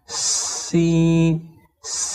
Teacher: সিন হরফকে জিহুবার আগা এবং সামনের নিচের দুই দাঁতের গোড়া একসঙ্গে লাগিয়ে সিনকে শীর্ষসহ চিকন করে পড়তে হয়